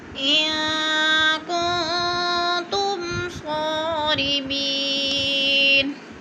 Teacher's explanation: یا ساکن سے پہلے میم کے نیچے زیر ہے تو یا مدہ، دو حرکات کے برابر ہم نے اس کو کھینچ کر پڑھنا ہے۔